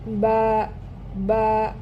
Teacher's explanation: এই বা এর উচ্চারণের স্থান হচ্ছে দুই ঠোঁটের ভিজা অংশ থেকে। অর্থাৎ ঠোট দুটো স্বাভাবিক অবস্থায় থাকবে।